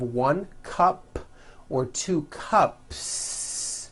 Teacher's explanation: There's no voicing at the end of that word. The S remains unvoiced. 1 cup, 2 cups.